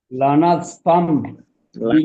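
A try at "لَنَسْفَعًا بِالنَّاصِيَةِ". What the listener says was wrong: ফাম না, ফাম না। লাম জবর লা, নুন সিন জবর নাস, লানাস ফা জবর ফা, লানাস ফা।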